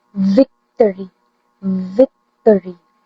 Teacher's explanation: My assigned APA letter are V In order to produce the sound v, upper teeth touch your bottom lip. Blow air through the small gap while using your voice and your vocal cord vibrates, making it voice labiodental fricative.